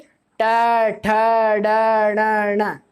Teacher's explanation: ये हमारी जीभ डायरेक्टली हमारा तालु के टच करती है, ऊपर साइड पूरी सीधी खड़ी होके। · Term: मूर्धन वर्ग